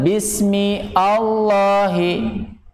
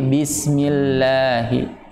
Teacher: Hamzahnya anggap saja tidak ada. Jadi langsung masuk kepada huruf lam. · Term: hamzah wasal